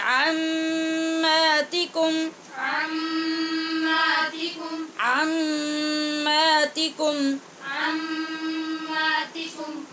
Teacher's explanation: میم مشدد کی وجہ سے ہم غنہ کریں گے